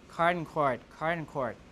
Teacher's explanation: people merge card and chord together some American English speakers pronounce card and cour the same card